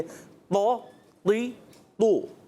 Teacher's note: पेश आएगा होंठ गोल हो जाएंगे